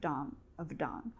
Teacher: so here we don't pronounce h